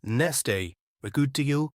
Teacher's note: we see t and d appear consecutively. so the first one is directly omitted.